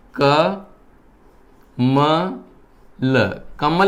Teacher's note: क बोलोगे तो अ निकल रहा है, म बोलोगे तो भी अ आ रहा है, ल बोलोगे तो भी अ। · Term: अ स्वर की ध्वनि